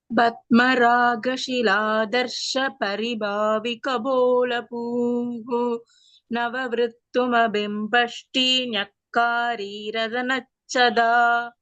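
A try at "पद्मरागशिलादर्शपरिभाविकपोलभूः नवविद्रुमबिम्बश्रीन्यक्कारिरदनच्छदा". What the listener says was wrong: Bhagini, in the second pada, it is Paribhavi Kapola Bhu. Bha is Mahaprana and Bhu is also Mahaprana. And in the second pankti, it is Nava Vidruma Bimbashri. There's no Rakara with V. It is Nava Vidruma Bimbashri.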